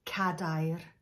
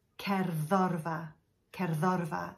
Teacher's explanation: The emphasis of that word is always on the penultimate syllable.